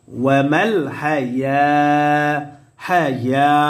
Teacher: ইয়ার উপরে খারা জবর আসার কারণে এক আলিফ টান হবে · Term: মাদ্দে তবাই